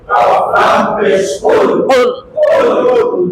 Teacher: হ্যাঁ, 4 নাম্বার মাখরাজ। জিহ্বার গোড়া তার বরাবর উপরের তালুর সঙ্গে লাগাইয়া 2 নুকতাওয়ালা কফ।